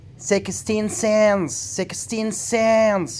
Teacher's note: You have to put the stress on cents.